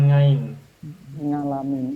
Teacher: orang-orang terutama orang-orang tua yang membaca Ain dengan nga